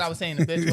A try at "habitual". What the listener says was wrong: It sounds like you don't be saying them H's strong enough.